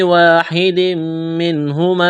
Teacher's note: تنوین کے بعد میم ہے، ادغام کریں گے، یہاں پر آواز ناک میں چھپائیں گے